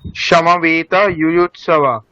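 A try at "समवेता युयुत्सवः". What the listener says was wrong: হ্যাঁ আচ্ছা বিসর্গটা কোথায় যাবে, ওখানে বিসর্গ আছে না, ইউৎসবঃ,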